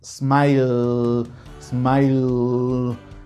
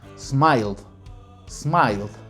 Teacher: Vemos que hay vibración y entonces nuestro sonido para el tiempo pasado será la letra D.